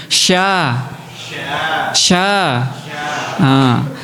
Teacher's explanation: Tengah lidah coba dikenakan ke langit-langit yang atas. Kemudian udaranya disebar karena dia memiliki sifat tafashi, menyebar suaranya.